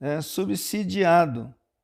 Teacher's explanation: O S aqui representa o fonema si, né? E não o fonema Z.